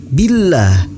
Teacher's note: In kuntum tu'minuna billah, hukum bacanya yaitu tarkik. Billah, lafaz Allah dibaca tipis dan dipanjangkan 2 harokat